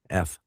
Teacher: Your lower lip hits your front teeth when you say F.